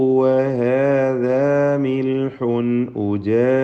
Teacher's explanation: മിൽഹുൻ ഇൽഹാർ ഹൽക്കി നൽകി തൻവീനിനെ വെളിവാക്കുക, മണിക്കരുത്. ഉജാജ് ഖൽഖല കുബ്ര നൽകി ജീമിൽ വഖഫ് ചെയ്യണം.